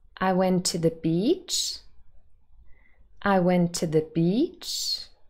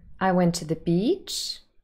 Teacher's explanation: there is a rising intonation here and this is exactly hrt high rising terminal